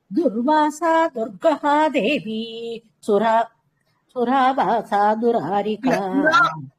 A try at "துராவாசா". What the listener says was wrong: துராவாசான்னு மாத்திக்கலாம். இந்த சுராவாசா கிடையாது, துராவாசா. அந்த சூக்கு பதிலா